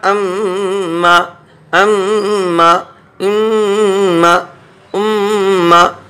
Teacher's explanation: अम्मा अम्मा अम्मा अम्मा, नाक में आवाज़ जा रही है। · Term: गुन्ना